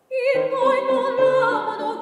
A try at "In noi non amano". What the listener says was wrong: In noi non amano. Less in between non and amano. In noi non amano.